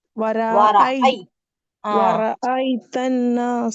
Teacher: ரா பத்ஹா இருக்கறதுனால ராவ வந்து ஹெவியா தான் சிஸ்டர் ஓதணும்ன்னா